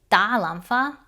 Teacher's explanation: if you mispronounce the first tone and say da lam fa, that actually means to hit an orchid